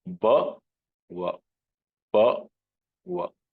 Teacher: So Abhyantara Yatna for ba is, it's a proper stop and va is Ishat Sprushta. So va is nothing but ba itself with Ishat Sparsha, a little gentle touch